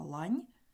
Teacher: у слові Лань є один м'який приголосни це нь він м'який за допомогою м'якого знаку Так його м'який знак пом'якшує